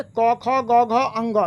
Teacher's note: क, ख, ग, घ, अंग सब आ गया, उसका उच्चारण कंठ से होता है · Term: क वर्ग